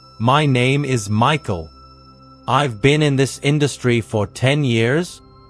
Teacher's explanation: the habit of ending declarative sentences with a rising tone, as if everything you say is a question seeking confirmation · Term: upward inflection